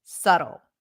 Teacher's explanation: we pronounce it with a flapped t and an L